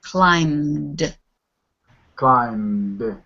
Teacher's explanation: you don't really do anything when you get your mouth closed for the M sound you just end the M with a d